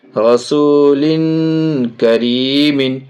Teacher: آگے کاف چھوٹی کاف حرف اخفا میں سے ناک میں آواز چھپا کر کے پڑھیں گے